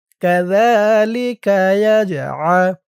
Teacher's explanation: জিম কলকলার হরফ ধাক্কা দিতে হবে।